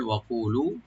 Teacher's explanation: ওয়া ওপেন রাখে, কফটাকে ডিপ করে এক আলিফ টানবেন, লু এক আলিফ টানবেন